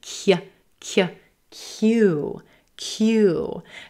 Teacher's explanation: We have our K, K, K sound and then a Y, Y, the Y consonant.